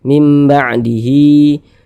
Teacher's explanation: Hi dibaca panjang Mad Silah qasirah panjang dua harakat